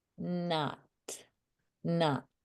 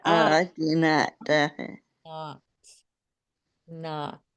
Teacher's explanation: my lips weren't even coming together my jaw dropped for that